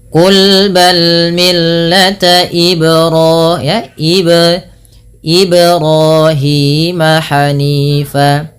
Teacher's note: huruf ba tersebut perlu dibantulkan bunyinya karena ia merupakan bacaan qalqalah